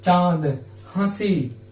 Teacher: इनका उच्चारण स्थान आगे हम जब पढ़ेंगे हिंदी में तो बताएंगे, लेकिन आज भी हम थोड़ा सा बता देते हैं आपको कि ये चंद बिंदु जो है, ये अनुनासिक जो होते हैं, ये नाक और मुंह से दोनों से इन स्वरों का उच्चारण होता है। जैसे हम कहते हैं चांद, हंसी, तो मुंह से भी और नाक से भी इनका उच्चारण हो रहा था, इसलिए जो है ये क्या है, अनुनासिक हो गया।